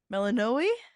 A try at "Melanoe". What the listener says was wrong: Melanoe. You're putting the emphasis on the wrong syllable. Melanoe.